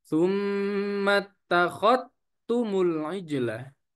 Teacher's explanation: Maka artinya di situ kalau kita baca idghamuz dzali fit ta'i, di idgham dalnya kepada huruf ta. Artinya dalnya hilang ya. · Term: idgham dal fit ta